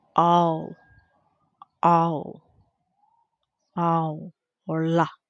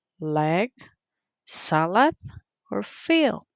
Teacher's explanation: The point of articulation it is alveolar. Manner of articulation it is lateral or approximate.